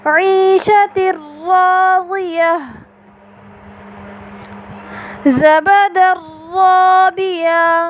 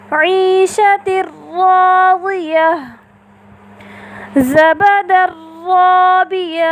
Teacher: آپ نے دیکھا ان دونوں مثالوں میں نون التنوین کے بعد حرف را متحرکہ آیا تو ہم نے نون التنوین کو حرف را متحرکہ کے ساتھ اس طرح ملا کر ادا کیا کہ دونوں ایک ساتھ مشدد ادا ہوئے بغیر غنے کے